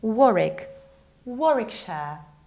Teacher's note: you have to skip middle W